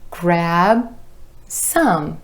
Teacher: lips coming together for that final B sound and going straight then into the S.